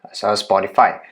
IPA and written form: ˈspɒtɪfaɪ (Spotify)